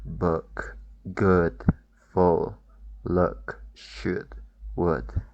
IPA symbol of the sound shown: ʊ